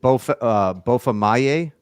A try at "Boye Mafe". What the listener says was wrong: Mafe. You had the Y.